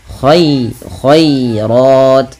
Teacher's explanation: rnya baru dibaca dengan tebal karena dia tafhim berharakat fathah